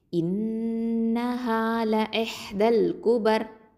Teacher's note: இப்போது இதை வந்து நம்ம ராவை வந்து சுக்கூனை மாற்றிடுவோம் வக்ஃபு பண்ணுறதுனால. அப்போது ரா சுக்கூன் பெற்றதுக்கு முன்னாடி ஒரு எழுத்து ஃபத்தா இருந்துச்சுன்னா அந்த ராவை தஃப்ஹீமாக ஓதணும்